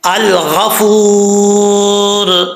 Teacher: तो वाव को एक अलिफ की मिकदार लंबा करके पढ़ेंगे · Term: वाव मद्दा